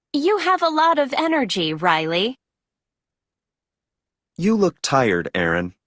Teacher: with direct address there is usually falling intonation and a pause before the next name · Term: Intonation with direct address